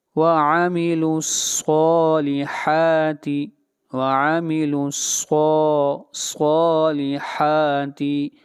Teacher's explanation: صاد کو بھی لمبا کریں گے ایک الف کے برابر، اور حا کو بھی لمبا کریں گے ایک الف کے برابر